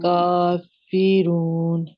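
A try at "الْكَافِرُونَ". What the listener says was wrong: کافرون کا اس کو موٹا نہ رکھے یہ موٹا نہیں ہے. کافرون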